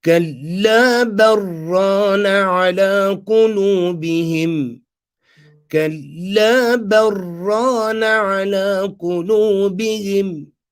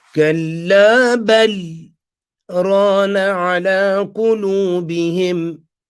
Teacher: we're going to do idraj by joining ba, fatha, and doing the idgham of the lam into the ra